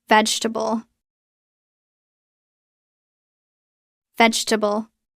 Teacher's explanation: We drop the second e. It becomes three syllables. · The stress is strong on the first syllable.